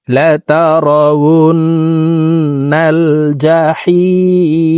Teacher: মধ্যে আরজি তিন আলিফ টানিয়া পড়িতে হয়